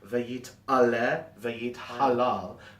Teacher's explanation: I took my time to overpronounce that ayin and the hey, so that the words don't sound mushed or careless, because they mean different things.